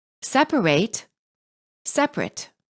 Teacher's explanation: the at word ending is pronounced fully in verbs but reduced in adjectives and nouns for example the at ending of the word separate is pronounced